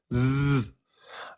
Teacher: Le point de sortie, la langue, elle est en contact avec les incisives inférieures, en bas là. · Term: lettre Zey